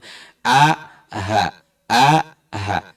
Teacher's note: Ha dari tenggorokan bagian bawah, ha bulat, ha hati, itu dari tenggorokan bagian bawah sama dengan huruf hamzah makhrajnya, tempat keluarnya.